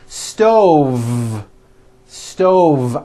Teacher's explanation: I should have said stove. Stove. I cooked dinner on a hot stove with a voiced V.